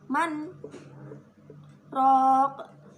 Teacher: Saktah yaitu berhenti sejenak sekedar satu alif dan tidak boleh bernafas. Ro disebut bacaan mat tabi'i, sebab fathah bertemu alif.